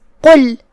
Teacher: قاف کی ادائیگی زبان کے جڑ اور تالو کے نرم حصے سے ہے. ہم قاف کو وہیں سے پڑھیں گے جو کہ وہ حروف تفخیم میں سے ہے، تو ہم اسے بھاری آواز میں پڑھیں گے.